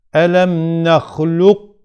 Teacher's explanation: önce Kaf harfinin mahrecine gidiyoruz sonra kef harfiyle tamamlıyoruz tam bir iddiam yapmıyoruz kefi şeddeli gibi okumuyoruz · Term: nakıs idam